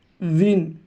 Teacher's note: দুই ঠোঁট এক জায়গা করব, ইন হবে না বিনও হবে না, মাঝখানে উইন